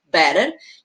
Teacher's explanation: Eu tenho o T que é som de D para eles e para nós de R